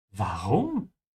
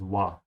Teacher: Don't be lazy with a W sound. In German, it's a V.